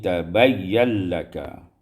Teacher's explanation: tabayyana laka, idghamul nun fil lam, diidghamkan nun pada lam menjadi tabayyan laka.